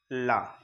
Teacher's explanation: तो जिन ध्वनियों का उच्चारण में जिह्वा का जो अग्रभाग है वो वक्ष को स्पर्श करता है, या फिर कह लीजिए श्वास जिह्वा के दोनों पार्श्वों से निकलती है, उसे पार्श्विक ध्वनि कहते हैं।